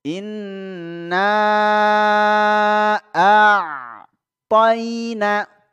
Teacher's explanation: huruf ain itu ketika dia sukun, ya, hurufnya itu seolah-olah menghilang kemudian muncul lagi suaranya